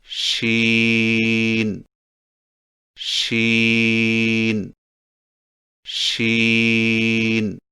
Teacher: شین کی ادائیگی میں زبان کے درمیان کو تالو کی طرف بلند کرتے ہوئے باریک اور پھیلتی ہوئی آواز میں پڑھیں